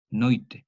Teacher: Es una yod semivocálica, noite. Entonces la K se vocaliza originando esta yod semivocálica, noite. Luego la yod inflexiona, cierra esta O tónica abierta, impidiendo su diptongación.